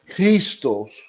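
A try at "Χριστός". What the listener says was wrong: but but you have the emphasis at the end, so it's not Christos, it's Christos.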